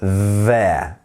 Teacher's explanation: your tongue is going to your top teeth and you're making a buzzing sound as the air slowly passes through the teeth so there but it's a quick one it shouldn't be it